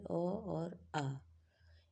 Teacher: जैसे हिंदी स्वरों में पहला और दूसरा जो अक्षर होता है अ और आ इनका उच्चारण स्थान कंठ है